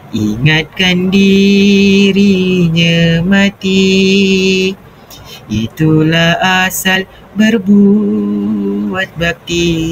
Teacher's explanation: Nada yang menurun dan berirama lembut menggambarkan keindahan hati, keinsafan dan kesedaran moral